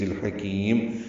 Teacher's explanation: میم ساکن پہ اظہار شفوی ہوگا، وقفاً میم ساکن ہو جائے گا